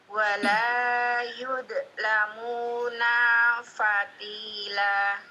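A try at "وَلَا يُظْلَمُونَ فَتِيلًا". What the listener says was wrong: Tab yudhnya jangan dipantulkan, naknya pendek. Ulangi.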